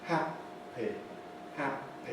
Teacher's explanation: You can see my lips coming together, staying together, separating. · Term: release